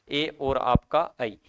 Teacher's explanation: ए और ऐ इनको बोलने में अ और इ का बड़ा योगदान रहता है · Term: कंठ तालव्य